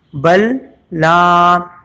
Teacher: تو کیونکہ لام اور لام کا مخرج بھی ایک ہی ہے، صفت بھی ایک ہی ہے، تو یہاں متماثل ادغام ہوگا، لام کو لام سے ملایا جائے گا، اس لیے جزم والا لام اگلے لام میں آ کے ختم ہو جائے گا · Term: ادغام متماثلین